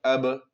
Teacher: اب اس کو پڑھیں گے، قلقلہ کے ساتھ پڑھیں گے، مخرج ٹکر کھا کر ان کے الگ ہوں گے